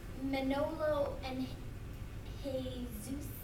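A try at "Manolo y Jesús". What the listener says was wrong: You don't pronounce the J.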